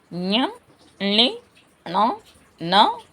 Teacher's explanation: ఇవి ఓష్ట్యములు తర్వాత తర్వాత అనునాసికములు అనునాసికములు అని ఇంతకు ముందు కూడా చెప్పుకున్నాం మనం ముక్కు సహాయంతో పలకబడేవి